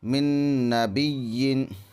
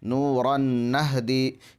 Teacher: ادغام مع الغنہ میں ناک میں آواز لے جا کر پڑھیں۔